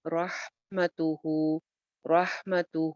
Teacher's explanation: ہا کی آواز چلتی ہوئی، را موٹی ہے